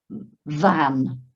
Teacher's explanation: top teeth on bottom lip, and get a bit of sound coming through, a bit of vibration